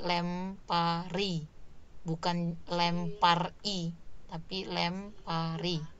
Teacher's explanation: Konsonan akhir dibentuk dasarnya kata lempar itu, berarti fonem R ya, fonem akhirnya itu bergeser ya, menjadi bergabung dengan sufiks I